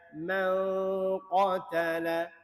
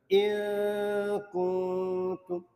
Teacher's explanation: Dengung ikhfa jangan nyatakan nun